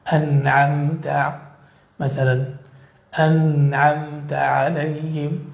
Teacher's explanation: فهنا النون الساكنة حكمها الإظهار وفيها أصل الغنة